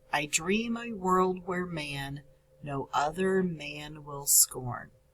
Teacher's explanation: man is a stressed syllable will is an unstressed syllable and scorn is a stressed syllable